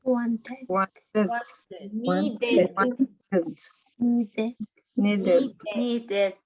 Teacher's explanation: vamos a pronunciar la E como si fuese I y vamos a pronunciar la D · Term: id sound